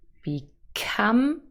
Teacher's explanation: become here the second syllable is stressed